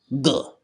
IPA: ɢ